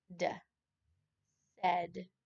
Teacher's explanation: The middle AI in this word said is sounding like a short E instead of an A or an I.